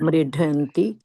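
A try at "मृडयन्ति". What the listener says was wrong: ha, not ha, just da for damru.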